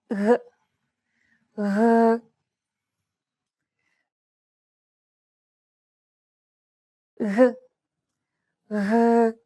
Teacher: The G should be held very loosely, enough so that your tongue and the back part of your mouth are barely separated from each other. Blow a steady stream of air between the small separation. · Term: soft, continuous G sound